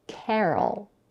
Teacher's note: It has two syllables and the first syllable is stressed. Carol. We start with the aspirated voiceless velar stop k.